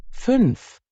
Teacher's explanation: Umlaut sounds like Au, but with your lips rounded as if you're saying oo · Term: U. Umlaut